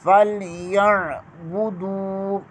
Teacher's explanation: فَلْيَعْبُدُوا، یا کیا زبر کے آگے عین ہے، عین ادا کریں گے، فَلْيَا نہیں پڑھیں گے، یا فَلْيَا، بعض لوگ فَلْيَا پڑھتے ہیں، عین حمزہ میں تبدیل ہو جاتا ہے، وہ غلط ہے۔ · دال کے اوپر پیش ہے، آگے واؤ مدہ ہے، اسے کھینچ کر پڑھیں گے۔